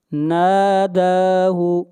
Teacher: نون کو بھی کھینچ کر پڑھیں گے اور دال کو بھی، یہ مد اصلی ہے